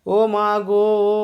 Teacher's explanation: এখানে ও ধ্বনিটি টেনে টেনে উচ্চারিত হচ্ছে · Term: প্রতস্বর